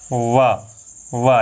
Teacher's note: ये वा ये दंतोष्ठ होता है, दांत और ओष्ठ दोनों के सहारे बोला जाता है